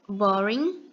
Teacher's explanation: a gente não pronuncia a letra g no final então a pronúncia vai ter a letra N